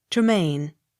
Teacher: Accent on last syllable.